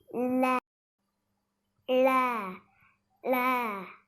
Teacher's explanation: ல சொல்லும்போது நாக்கு மேல் அண்ணத்தோட நடுப்பகுதியை தொடணும். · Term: வருடல் லகரம்